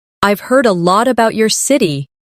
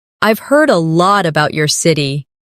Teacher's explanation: Try to keep the sentence flowing without pausing between about and your.